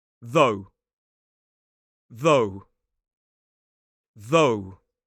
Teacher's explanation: So this time we have a voiced th and a long “o” sound.